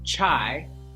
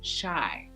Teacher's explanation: And Thai speakers, when you're saying a CH sound like chai, it's very easy for it to sound like an SH sound